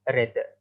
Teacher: In RP English, it is pronounced as red, but in standard Scottish English, the phoneme R in the word red is substituted with the alveolar taps R. So the pronunciation in SSE will be red.